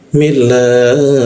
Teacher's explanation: Kita panjangkan lamnya itu 3 ketukan.